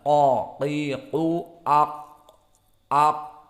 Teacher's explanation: Maka karena qaf di sini sakinah maka kita masukkan atau kita masuk kepada makhrajnya. Maka makhraj qaf dia adalah aqsal lisan ma'al hanak al-lahmi di dalam qiqu aq.